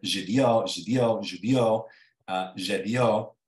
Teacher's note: the stress is on the final vowel as opposed to the I, like in Spanish